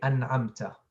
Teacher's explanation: the tongue touches the gum and the sound comes from the nose the nasal nasalization come from the nose so you have two